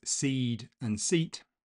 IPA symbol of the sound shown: iː